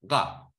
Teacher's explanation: that's a voiced uvular, which is a ga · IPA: *ɢ-